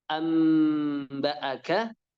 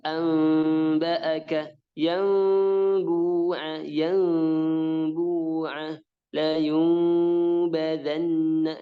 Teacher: Kalau cara baca yang pertama tadi bibirnya nempel, amba'aka. Sedangkan cara baca yang kedua, bibirnya hampir menyentuh atau hampir nempel. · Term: iqlab